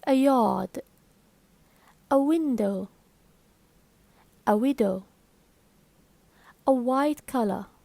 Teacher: there is no real obstruction to the flow of air in the vocal tracts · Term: semi-vowels